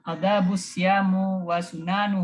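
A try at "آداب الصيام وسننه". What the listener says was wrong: Nah, kenapa siamu?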